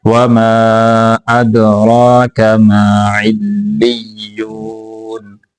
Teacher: دال کے اوپر کلکلہ کریں گے را کو موٹا کر کے لمبا کر کے پڑھیں گے